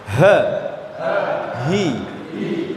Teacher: huruf H ya ada di tenggorokan bagian bawah